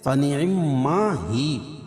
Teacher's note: جب یہاں وقف کریں گے تو یہ جو یا کے اوپر جو حرکت ہے زبر ہے اس کو جزم سے بدل دیں گے. فنعما ہی سے فنعما ہی.